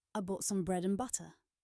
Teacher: The word and is there, but it is tiny. It is almost just an n sound.